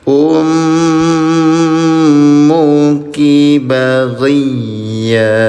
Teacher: Dengungkan cara bacanya selama dua harakat. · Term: Gunah, Gunnah